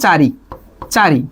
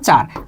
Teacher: চারি একটা ই উচ্চারিত হচ্ছে, কোথায় উচ্চারিত হচ্ছে, শেষে, কিন্তু চারে এই উচ্চারণটা নাই, হারায় গেল। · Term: অন্ত স্বরলোপ